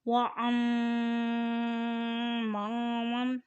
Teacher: میم کے اوپر شد ہے اس لیے اسے غنہ کریں۔ وَأَمَّامًا، میم کے ساتھ الف ہے اور اوپر زبر ہے اس لیے یہ کھینچ کر بھی ادا کریں۔